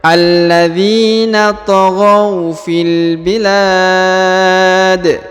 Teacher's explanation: Karena dia berhenti di sini ya. Dan huruf dalnya disukunkan. Karena disukunkan maka dia dibaca pantul ya